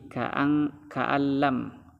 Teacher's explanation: Nun mati disambut lam, itu hukumnya adalah idgham bila gunnah. Itu tidak boleh berdengung tetapi hanya melebur saja. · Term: idgam bilaghunah